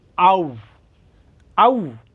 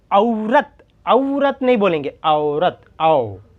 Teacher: अब ये आउ जो है मराठी में आउ ही प्रोनाउंसिएशन रहेगा, लेकिन हिंदी में आओ प्रोनाउंसिएशन होगा। कैसे? औरत, औरत नहीं बोलेंगे, औरत, आओ, इस तरह से।